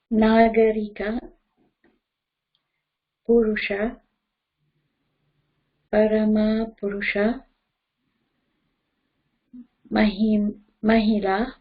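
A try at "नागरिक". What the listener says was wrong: Yes, good.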